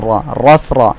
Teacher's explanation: দুইটা রই এর উপরে জবর থাকায় র মোটা করে পড়তে হবে